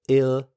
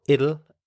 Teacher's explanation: The end of it is a schwa sound. Ill. So it'll is how you say it.